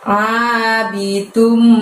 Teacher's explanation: mulut tidak usah dibuka lebar karena keluarkan suaranya hanya dari tenggorokan bagian tengah ya. Abidum, dum di situ kita tahan selama 2 harokat ya, jangan terburu-buru.